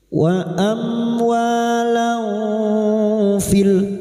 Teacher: Saat menyamarkan dan mendengung selama tiga harakat, kita siap-siap membunyikan huruf depannya yaitu huruf fa. Dan ini juga yang disebut dengan ikhfa ausat. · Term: ikfa hakiki, ikfa ausat